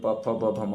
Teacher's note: ओठ का उच्चारण ओठ से किसका उच्चारण स्थान होता है? प वर्ग का होता है।